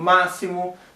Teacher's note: sílaba terceira de trás pra frente é a mais forte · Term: proparoxítonas